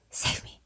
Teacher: it sounds like a very breathy low save me. You can barely hear him.